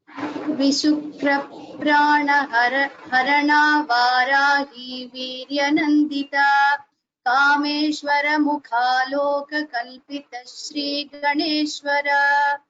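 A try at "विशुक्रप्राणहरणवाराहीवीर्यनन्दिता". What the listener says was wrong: Vishukra Pranaharana Varahi Viryanandita. So there is, you're giving a dirgha for that na. Pranaharana, you're saying, don't do that. Vishukra Pranaharana Varahi Viryanandita. This is how you should chant, okay?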